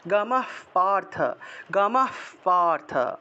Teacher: উচ্চারণটা এরকম আসে, গমহ গমহ, এইভাবে গমহ পার্থ, গমহ পার্থ, অর্থাৎ বিসর্গের পরিবর্তে যে হটা আসবে সেই হয়ের সাথে সাথে পটাকে ধরতে হবে